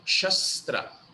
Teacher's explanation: First S is SH as in shirt, second S is dental